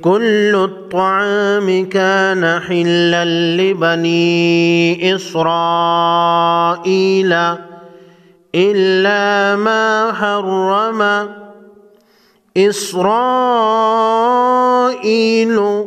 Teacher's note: بڑی مد کو 5 الف کے مقدار کھینچ کر پڑھیں گے، اور را پر زبر ہے، موٹا پڑھیں گے۔